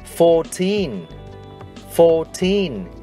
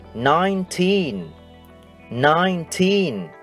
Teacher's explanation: Quý khán thính giả chú ý, tất cả các số từ 14 cho đến 19 đều có đuôi giống nhau, teen, và trọng âm trong các từ này đều rơi vào teen. Vì thế, chúng ta sẽ phát âm âm teen to hơn âm đầu tiên.